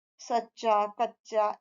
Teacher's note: जब दो एक ही तरह की ध्वनियां व्यंजन की ध्वनि आपस में जुड़ती है तो द्वित्व व्यंजन बनते हैं